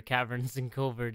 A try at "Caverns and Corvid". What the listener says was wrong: R in Covert. It really sounded like you put an R in there somewhere.